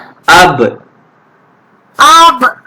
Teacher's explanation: Jadi kelima-lima huruf ni apabila bertanda mati sukun, kita perlu qalqalahkan. Kita perlu melantunkan bacaan, melantunkan suara.